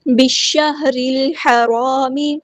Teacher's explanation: لام یہاں پہ لام شمسیہ ہے تو اس کو ہم ظاہر نہیں کریں گے · میم کی پیش کو ہم لمبا نہیں کریں گے، بالشہر الحرام، با کو ہم نے شین کے ساتھ ملا دینا ہے، حمزۃ الوصل ہمارا ڈراپ ہو جائے گا